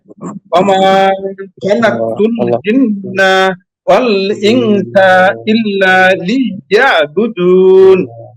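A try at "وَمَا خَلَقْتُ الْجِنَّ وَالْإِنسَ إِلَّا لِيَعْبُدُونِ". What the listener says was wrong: এখানে আরেকটু পূর্ণ বেশি করেন, পূর্ণ হয়েছে যে ইনসা, নুন সাকিনের পরে সিন আসছে, সিন ইকফার হরফ না? হ্যাঁ তাহলে ইনসা। ওমা খলাকতুল জিন্না ওয়াল ইনসা ইল্লা লিয়াবুদুন।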